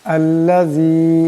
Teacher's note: এখানে জাল আছে, জালের আওয়াজটাকে নরম করে পড়তে হবে। আল্লাযী, এখানে জালের নিচে জের, এরপর ইয়া সাকিন এবং মদ আছে, এটাকে লম্বা করে পড়তে হবে।